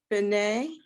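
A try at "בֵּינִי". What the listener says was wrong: Look at it again. It looks like B'nai, but there's different vowels. Bay is the first part.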